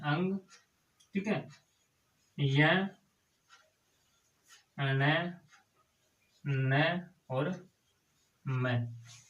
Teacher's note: य ण न और म इनका जो उच्चारण स्थान होता है वह क्या होता है नासिक